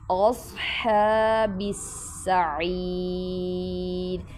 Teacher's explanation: سین کی آواز نہیں آنی چاہیے، صاد ہے یہ